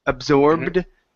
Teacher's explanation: sometimes the Ed sounds like a d when the end of the word is a voiced sound like a b